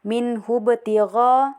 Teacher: ba sukun di tengah kalimat jadi dibaca itu tidak ditekan atau tidak terlalu dipantulkan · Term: qalqalah sugra